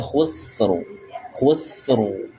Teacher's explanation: Kha tebal, sinnya tipis, khus, ra-nya juga tebal.